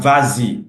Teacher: S pronounced because of this Y